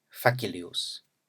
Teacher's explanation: In a word like facilius, we have a bimoraic foot with the stress on the first syllable.